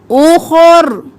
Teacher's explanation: خو موٹا رو موٹا